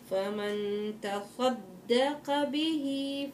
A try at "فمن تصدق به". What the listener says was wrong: تصدق فخم الصاد القاف.